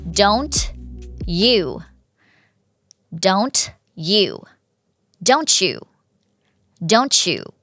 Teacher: แล้วก็มักจะเกิดกับเสียงข้างหน้าเป็นTหรือว่าDนะคะเทอะเดะแล้วข้างหลังเป็นเยอะเป็นยูบ้างเป็นเป็นยยักษ์อ่ะอ่ะTดีแล้วเมื่อเยอะรวมกันมันก็จะเป็นเสียงอื่นไปเลยเป็นแบบเฉอยกตัวอย่างนะคะdon'tyoudon'tyoudon'tyoudon'tyou จากเธอะกับเยอะเปลี่ยนเป็นชช้างแบบCHไปเลย